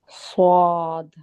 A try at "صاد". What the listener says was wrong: نہیں، واو کی آواز نہیں آئے گی، الف کی آواز آئے گی. صاد صاد.